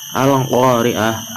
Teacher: Al-Qa-nya itu berharokat fathah bertemu dengan alif, maka disebut mad tabi'i, dibaca 2 ketukan